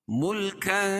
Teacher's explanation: اخفاء حقیقی، کیونکہ تنوین کے بعد حروف اخفاء کے 15 حرفوں میں سے کاف ہے